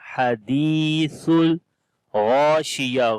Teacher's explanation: Ghain we read in heavy sound due to isti'la letter, and there is alif madda we long. · Tha we read in soft sound.